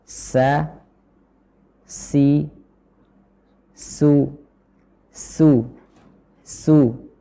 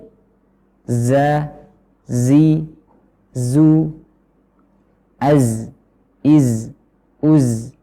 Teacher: Ciri khas dari tiga huruf ini yang keluar dari organ pengucapan nomor 13 yaitu memiliki sifat sofir. Sofir ini adalah suara yang tajam di telinga, dikarenakan dia keluar melalui celah yang sempit antara gigi seri bawah dan atas tadi